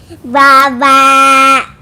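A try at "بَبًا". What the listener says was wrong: Ini pathatain, ada dua pathanya. Ban berarti. Ban.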